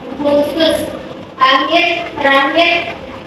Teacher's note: KH diucapkan dengan mengalirkan udara dari tenggorokan, mirip dengan bunyi H, tetapi lebih kuat